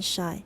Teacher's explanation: the narrowing of the vocal tract between the blade of the tongue and the back part of the alveolar ridge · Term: palatal alveolar fricative